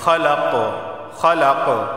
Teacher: خلق یہاں بھی قلقلہ ہوگا کیونکہ قاف حروف قلقلہ میں سے وقف کی صورت میں آواز مخرج سے ٹکرائے گی